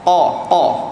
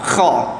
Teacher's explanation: Kalau kita tahan nafas jadi huruf qa. Kalau kita hembuskan sedikit maka dah jadi kha.